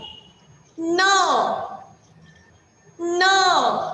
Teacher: हे जे न आहे याला बाणातला न असं म्हणतात. म्हणजे हे न अक्षर आपण ज्यावेळी वाचतो, त्याचा उच्चार करतो, त्यावेळी आपली जी जीभ असते ना ती आत गोल वळते. बघा, न अशी गोल आत वळते जीभ आपली.